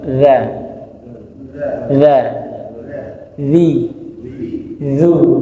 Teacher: Ujung lidah ditempelkan sekaligus digesekkan dengan ujung gigi seri atas. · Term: dzal